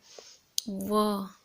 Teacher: वह एकलौता ऐसा वर्ण है जो ओठ और दांत की सहायता से बोला जाता है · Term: ओष्ठ और दंत